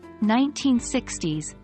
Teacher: For decades, we generally stress the second part of the number